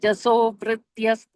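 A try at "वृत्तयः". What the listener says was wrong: No. You are saying vrityas. It's vrittayas.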